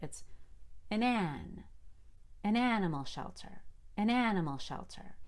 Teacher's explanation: shelter an animal shelter don't forget to change and to n it's really a short e sound you don't open your mouth all the way to make a short a